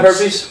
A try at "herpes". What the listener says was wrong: the H is silent. It's herpes.